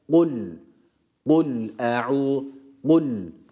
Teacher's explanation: bu harf Kaf harfidir Kef değildir kalın olması hasebiyle Damme hareke almış u sesiyle